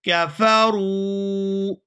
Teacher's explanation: ان الذین کفروا، یہاں پر واو ساکن ہے اور اس سے پہلے پیش ہے تو یہ واو مدہ ہے، را کو واو کے ساتھ ملاتے ہوئے کھینچ کر ادا کریں گے